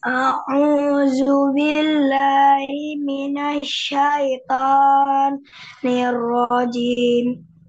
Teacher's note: O itu ketebalannya kurang. Ketebalannya kurang. Kenapa dia nggak tebal? Karena mengangkatnya lidah itu kurang ya. Mengangkatnya pangkal lidah kita itu kurang. Ya. Ya, akhirnya dia menghasilkan suara yang enggak tebal atau ya cenderung tipis ya.